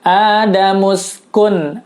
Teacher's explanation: Maksudnya adalah jelas bunyi suara nun sukun atau tanwinnya. Jelas bunyi suara n-nya tanpa ditahan dan tanpa didengung. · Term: izhar